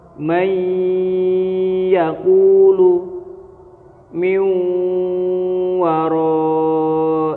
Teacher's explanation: yaitu dengan cara memasukkan suaranya Nun dan mim mati Nun atau tanwin dimasukkan huruf selanjutnya disertai dengan dengung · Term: Idgham Bighunnah